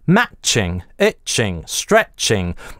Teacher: А в английском в таких сочетаниях matching, itching, stretching гортанная смычка звучит гораздо более интенсивно и напряженно.